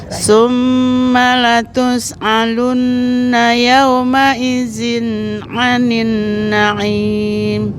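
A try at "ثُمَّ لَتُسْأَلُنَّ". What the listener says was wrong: Nah, yang tus'alunna ini A biasa Ibu, hamzah. Latus'alunna.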